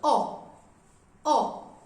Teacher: The pronunciation is O. Very short and close. O. O.